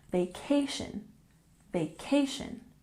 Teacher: vacation has emphasis on the second syllable